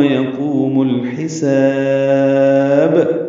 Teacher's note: آخر میں دیکھیں با کو ہلایا ہے، قلقلہ کیا ہے، با پہ قلقلہ ہوگا ، با ساکن کر دیا، پھر سماعت کو فرمائیں، ربنا اغفر